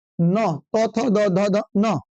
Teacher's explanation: तवर्ग बोले जाते हैं दंत से